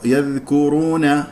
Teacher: فاذا نطقت الذال فكان هنالك هواء يلامس الاصابع فهذه ذال خطا تدرب على ان تخرج ذالا بصوت من غير نفس لانه رخاوه · من غير نفس لانه رخاوه يذكرون لا تفخم الكاف يذكرون خطا الكاف مرقق والراء مفخم لانها مضمومه